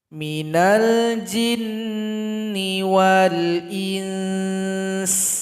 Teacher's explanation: karena ada nun sukun jumpa dengan sin harus ada ikhfa. Jadi didengungkan di sini 2 ketukan.